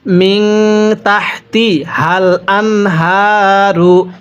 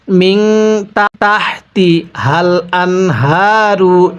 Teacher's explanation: এরপরে মিন তাহতিহাল আনহারু, পড়ুন মিন তাহতি হাল আনহারু, এই গোল হাগুলো উচ্চারণের সময় গলার মধ্যে আওয়াজ করে পড়বেন